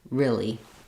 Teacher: we often reduce this e sound to more of an I sound like really